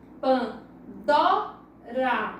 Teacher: Então o dó, ela é a sílaba tônica, porque ela é a sílaba mais forte. Pan, ela é uma sílaba átona, e rá também uma sílaba átona, porque ela é a sílaba mais fraca, ok?